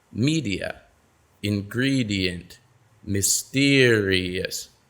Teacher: notice how the stress falls right in front of the suffix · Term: syllable stress